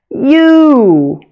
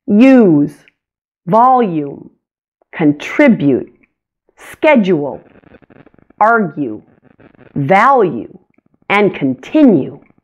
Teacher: it starts with a Y sound and sounds like we say you almost twice you here are some common words with the law you sound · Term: long you